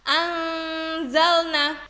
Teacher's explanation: Contoh yang pertama yaitu apabila nun sukun bertemu dengan huruf za, maka cara membacanya anzalna. Jadi antara nun dan huruf za itu terdengar samar seperti dimasukkan. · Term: ifa